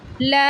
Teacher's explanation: لام زبر اور مد کو 3 سیکنڈ کے لیے لمبا کیا جاتا ہے